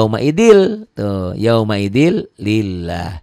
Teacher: l-nya cuma nyamber aja nyamber dan double tidak ditahan